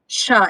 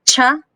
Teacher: when you pronounce cha, the air in your mouth should stop like ta before it is released like a sha